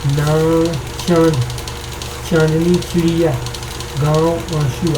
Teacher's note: अनुनासिक के उच्चारण में मुंह से अधिक और नाक से कम वायु निकलती है।